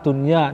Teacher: tidak dibaca dengung, melainkan dibaca idhar, jelas